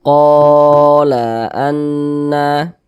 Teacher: Alif itu ya dua harakat gitu sama saja Jadi dua harakat itu kira-kira sepanjang dua ketukan